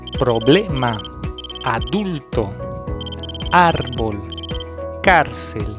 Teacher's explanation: Estas palabras llevan la sílaba tónica en la penúltima posición.